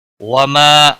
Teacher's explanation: وما الف مدہ ہے، 1 الف کے برابر کھینچ کر پڑھیں گے۔